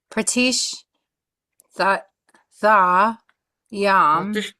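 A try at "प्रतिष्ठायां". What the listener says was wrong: Pratishtayam. capital T, then you have to pronounce this as T and not as th. when you see a small T, then it is a th.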